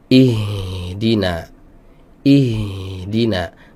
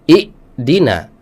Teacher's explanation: huruf ha ketika disukun itu ee nafas dan juga suaranya enggak putus